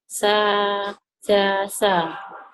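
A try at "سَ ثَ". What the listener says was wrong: Itu bedakan. Sa yang depan itu sa biasa. yang kedua itu ya, yang titiknya 3 di atas, kayak perahu, di atas perahu titik 3 itu cadel. Jadi, sa gitu.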